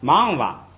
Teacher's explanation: 忙完了呢，轻声的带一个蛙就行了，也不管它是升降都不管了